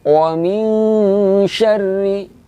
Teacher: Iya, ikhfa hakiki. Dibaca dengan samar-samar, panjang harokatnya 2 harokat.